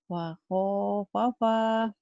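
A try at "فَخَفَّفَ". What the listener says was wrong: Nggak ada yang panjang. Fakhafafa.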